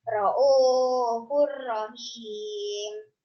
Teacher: Termasuk bacaan idom bila guna. Alasannya karena domah tanwin bertemu dengan ro. Ya. Cara membacanya masuk tanpa mendengung.